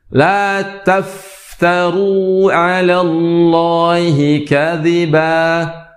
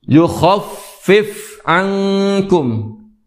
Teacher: Yang mana huruf fa mengeluarkan atau mengeluarkan udara atau mempunyai sifat hamas, yaitu banyak mengeluarkan udara.